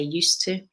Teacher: we have a soft D sound. You hardly hear it when I say used to. And then we've also got a schwa for T.